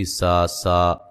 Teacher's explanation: سین کو باریک سیٹی سے ادا کریں گے